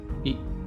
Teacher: ई में तालव्य स्वर है, तो ई में जिह्वा थोड़ी तालु की ओर ऊपर मुड़ जाती है,